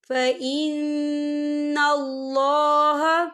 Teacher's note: فَإِنَّ اللَّهَ، یہ دیکھیں فَإِنَّ اللَّهَ، اللہ کا نام پر پڑھا جائے گا کیونکہ اللہ کے نام سے پہلے زبر ہے اور یہاں نون مشدد بھی ہے تو ہم یہاں غنہ بھی کریں گے